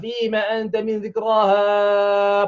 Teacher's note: mesti membaca dengan kadar 4 atau 5 harakat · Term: mat jaiz